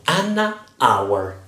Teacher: So, an hour, the H is mute, like I said before.